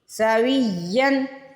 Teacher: ये भी या मुशद्दद है लेकिन यहाँ पे गुन्ना नहीं होना। इस या मुशद्दद पे हमने गुन्ना किया है और यहाँ पे हमने गुन्ना नहीं किया।